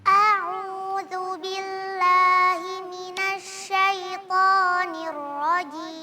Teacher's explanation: Kalau kita melafalkan a'u, itu hamzahnya kepanjangan. Harusnya a'u langsung, jangan a'u. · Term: tamtid